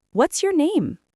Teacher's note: Questions starting with what, where, how, etc. usually have a falling intonation. Your voice goes down.